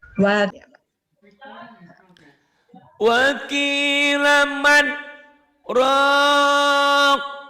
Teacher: Saktah, diam sebentar tanpa ngambil napas.